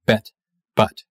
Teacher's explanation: your tongue goes forward for E, and then it pulls back for A